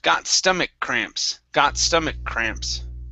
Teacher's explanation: that K can mix right along with that C sound, so I only pronounce one K sound